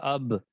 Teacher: با دونوں ہونٹوں کے تری والے حصے سے ادا ہوتا ہے